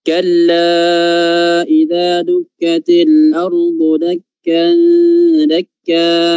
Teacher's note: Diulang lagi kalla, itu 4 harakat ya.